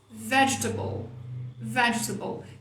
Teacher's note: A vontade de falar table. Se você resistir à vontade de falar table e colocar a sílaba tônica no V, que é onde ela está, rolou.